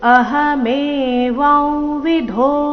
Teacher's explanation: ಅನುಸ್ವಾರದ ಉಚ್ಚಾರಣೆ ನಾಸಿಕಾ ವ ರೀತಿ ಬರಬೇಕು